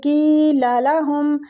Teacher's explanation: کی کے آگے بھی یا مد ہو رہی ہے، کی کو بھی کھینچیں گے